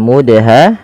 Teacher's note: Perhatikan di sini teman-teman, pada lafal mudha, di sini ada huruf dal yang berharakat sukun dan di sini diwarnai dengan warna biru yang artinya huruf dal ini wajib kita baca dengan bacaan qalqalah. Yaitu huruf dalnya harus memantul ya, harus kita pantulkan